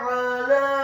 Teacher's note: huruf ainnya ditekankan keluar dari tenggorokan bagian tengah, fathah 1 harokat.